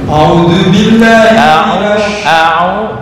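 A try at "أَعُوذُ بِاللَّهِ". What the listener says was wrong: bukan au ya. Belum. Ain, ain tuh di tengah tenggorokan.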